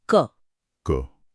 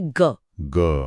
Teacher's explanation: ग बोलते ही गले में एक वाइब्रेशन एक गूंज महसूस हुई। बस वही गूंज या घोष हैं।